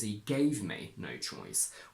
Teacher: we have the combination verb plus no plus content word, so we can overstress the word gave